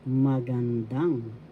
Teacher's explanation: The third syllable has the accent magandang.